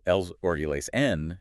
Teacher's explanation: sung such that eleison sounds like 2 syllables. You have to crush 4 beats into 2.